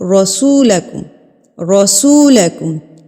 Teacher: زبر کے ساتھ ہم اس را کو پر پڑھیں گے، را نہیں پڑھیں گے، رسولکم نہیں پڑھیں گے، اس کو ہم پڑھیں گے رسولکم، رسولکم۔